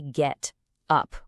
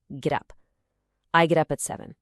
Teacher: Natives don't say get up with a hard punchy t. No, we link the sounds together so the t sounds more like a soft d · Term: sound linking